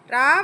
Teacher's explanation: ரா வந்து நாவின் நுனி மேலத்தின் முதல் பகுதியை தொட்டு வருவதால் ரகரம் தோன்றுகிறது. இது இடையினை எழுத்து என்பதால் இடையின ரகரம் என்கிறோம்.